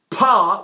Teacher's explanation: the idea is this pa, which is leaking air, when I stop it, ba, I stop it on the lips.